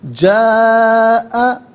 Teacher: 3 سے 4 حرکات کی مقدار کھینچ کر پڑھنا ضروری ہے، اور میکسیمم 5 سے 6 حرکات کی مقدار کھینچ کر پڑھنا چاہیے۔ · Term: مد متصل